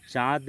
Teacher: इसके उच्चारण में ध्वनि मुख और नाक दोनों से निकलती है। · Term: चंद्रबिंदु